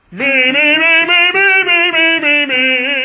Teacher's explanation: money now if you put the m in there with it then it appears that the m is very very short and the vowel takes up almost all the time